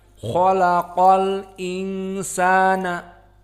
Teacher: Qiraah yang pertama jumhur, di mana hamzahnya ditahqiq dan tidak ada saqt. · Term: tahqiq hamzah